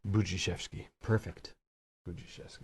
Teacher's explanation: the D for the DZ sound makes a J sound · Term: DZ is really J